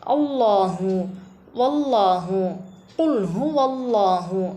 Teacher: இந்த அல்லாஹ்வுடைய லாமை நம்ம வல்லினமாக உச்சரிக்கணும் வாய் நிரம்ப அல்லாஹு அப்படின்னு சொல்லிட்டு வாய் நிரம்ப சொல்லணும்